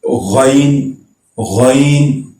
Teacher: غائن یہ حلق کے اوپر والے حصے سے ادا ہوتا ہے